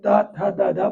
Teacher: जब त थ द बोलते हैं तो जीभ हमारी दांतों को टच करती है